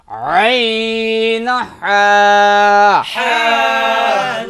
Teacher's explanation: দুই নাম্বার মাখরাজ হলকের মধ্যখান হইতে